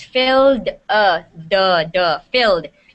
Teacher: you're saying it with a T. There's no T in it.